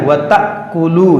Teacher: دیکھیے یہ حمزہ ساکنہ ہے، وَتَأْكُلُو، یہ جھٹکا دے کے پڑھیں گے